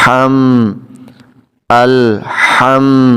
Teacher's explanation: ہا جب ادا کرتے ہیں تو حلق سے آواز آتی ہے، حلق سے ادا ہوتا ہے، یہ ہلکی ہوتا ہے، ہا ہلکی اس کو بولتے ہیں، یہ بھارا نہیں ہوتا، اس میں سانس کی آواز آتی ہے، ایسے ہم، الحم، ہا کو میم سے ملائیں گے، ہا زبر میم ہم، دال پیش دو، تو یہ لوگ پڑھتے ہیں دال پیش دو، تو دو نہیں کہنا، دو پڑھنا۔